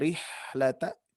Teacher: yang mana menghembuskan apa sih warna angin keluar ya dan juga posisinya ada di tenggorokan Tengah makanya ini termasuk huruf halqi huruf tenggorokan